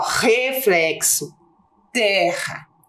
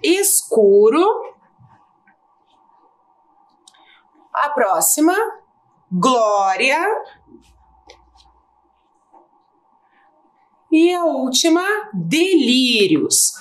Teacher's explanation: Então aqui nós temos o R inicial e RR com som forte. E nós temos o R entre vogais com som fraco.